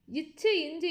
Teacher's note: இச்சு இஞ்சு என்பது நாவின் இடை அன்னத்தின் இடை